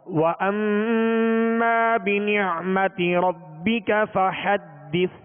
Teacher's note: فحدث، یہ سا ہے آخر میں، سا کو ساکن کر دیا تو حدث، سا اس کو سیٹی کی آواز پیدا نہ ہو، نرمی سے ادا ہو